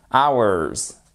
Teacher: Hours, ici, on n'entend pas le H. Celui-ci ne se prononce pas.